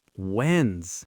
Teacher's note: the first syllable gets all the stress